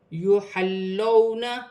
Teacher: واو ساکن سے پہلے زبر ہے، واولین بنتا ہے، اسے کھینچا نہیں جائے گا